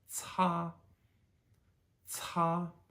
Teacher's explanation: C is not pronounced like a k it's pronounced like a TS